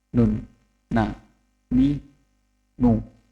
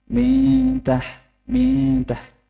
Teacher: Kalau nun asli, nun makhrajnya nun adalah ujung lidah bertemu dengan langit-langit. Kalau ketika ikhfa, ujung lidah tidak menempel di langit-langit. Jadi hanya tenggorokannya yang bergerak.